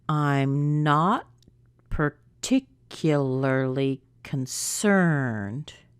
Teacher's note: what word is getting the most stress it's concerned isn't it